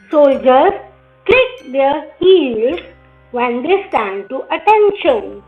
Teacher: सिर्फ हमारा click and heels पे स्ट्रेस आ रहा है